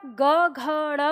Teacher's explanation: जो सघोष है इसमें कंपन बहुत ज्यादा बढ़ जाता है तो वह हमें उंगली पर महसूस होता है · जैसे ही आप ग घ ड़ बोलेंगे तो वो वाइब्रेशन आपको उंगली पर भी महसूस होगा